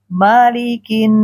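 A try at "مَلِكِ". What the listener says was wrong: Mo, bukan mo, me,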